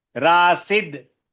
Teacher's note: रासिद में दंत्य हो गया दांत पे जीभ छुएगी